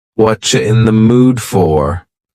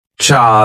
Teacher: Here, the word you has been reduced to cha.